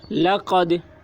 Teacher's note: دال حروف قلقلہ میں سے ہے اور اس پر جزم ہے، اس لیے دال میں قلقلہ ہوگا